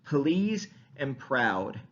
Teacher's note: the aspirated voiceless P sound, the P, turns those liquids from voiced, because liquids are voiced typically, into voiceless liquids